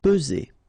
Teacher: remember first p, and then z. Only one S here between the two.